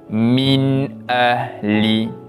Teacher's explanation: Baik, di sini terdapat bacaan izhar kholqi, di mana pada huruf nun mati bertemu pula dengan huruf hamzah. Yang mana cara bacaan nun mati itu kita bacakan dengan jelas tanpa dengung.